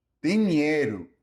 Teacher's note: Note that the O at the end of Brazilian Portuguese words is pronounced more like a U.